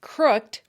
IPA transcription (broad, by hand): krʊkt